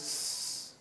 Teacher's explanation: But when you say cats, the pluralizing sound is sss, like that. No vocalizing, no vibration of the vocal cords.